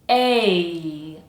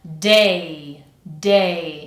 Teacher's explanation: we have the diphthong, A. We have to hear both sounds for that to be correct. A. Altogether, that's day, day.